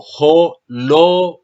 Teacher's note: Pero hay que respetar el lugar del acento. El acento no está en jo, sino en lo.